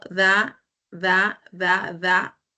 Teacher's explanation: La lengua sube y choca con los dientes superiores. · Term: dentales